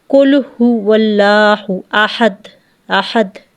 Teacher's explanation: آواز ایک بار بند ہو کے دوبارہ ظاہر ہوتی ہے، یعنی کہ آخر میں دال ہے، جب دال ساکن کریں گے تو احد، احد آواز بند ہو کے پھر ظاہر ہوگی۔ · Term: कलकला